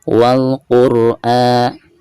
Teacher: Perhatikan alif lam yang ada di sini itu dihukumi alif lam qamariyah karena ada tanda sukun di atasnya. Maka lam tersebut itu harus dibaca sukun ya, atau dizahirkan lamnya ya.